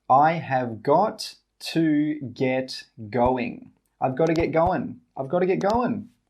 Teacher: We don't say 'got to'. We say 'godda'.